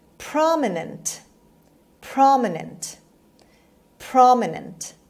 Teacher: the stress is on the first syllable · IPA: /ˈprɑːmɪnənt/